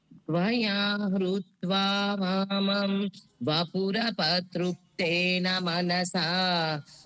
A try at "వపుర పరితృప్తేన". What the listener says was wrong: వపురప అంటున్నారండి. వపుర పరితృప్తేన. పరితృప్తేన.